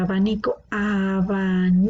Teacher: la sílaba tónica está en la penúltima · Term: grave